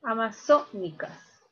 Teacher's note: la mayor fuerza de voz está en la sílaba so